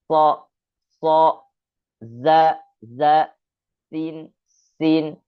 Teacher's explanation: ketika kita membacakan, ada seperti terdengar siulan burung. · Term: safir